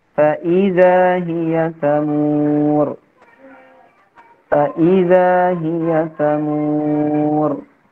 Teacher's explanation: i-nya itu ditekan karena untuk membedakan antara waw athof ya dengan permulaan kata selanjutnya